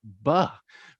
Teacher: It could be a voiced bilabial consonant